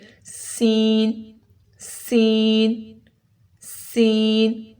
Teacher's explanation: سین میں سیٹی کی آواز آئے گی، اس کی پروننسیشن میں اوپر نیچے والے دانت قریب آ جاتے ہیں